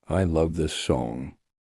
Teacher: Say it with emotion and stress on love.